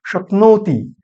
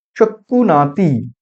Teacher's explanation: ব্যঞ্জন যুক্ত ব্যঞ্জন যেখানে রয়েছে তাকে ভেঙে দিয়ে তার মাঝখানে স্বরধ্বনিকে আনা হচ্ছে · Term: স্বরভক্তি বা বিপ্রকর্ষ